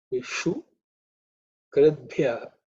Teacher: The ishu is again cerebral sha. Tongue should be raised up.